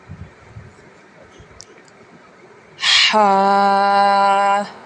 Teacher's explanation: حلق کے درمیان والے حصے سے ادا ہوگا جسے ہم بولتے ہیں وسطی حلق